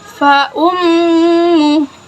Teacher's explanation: Maka panjang bacaannya 2 harokah. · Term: mad silah kasiroh